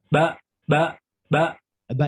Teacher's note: Ba. Ba ini salah satu di antara huruf hijaiyah yang keluar dari perpaduan antara dua bibir. Namanya asyafatain.